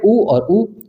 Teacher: जो होट है आपके बिल्कुल राउंड हो जाते हैं